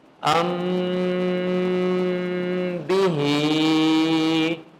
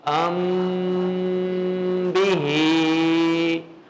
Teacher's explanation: میں نے اخفا بھی کیا، شفوی دیکھیں دونوں ہونٹ مل گئے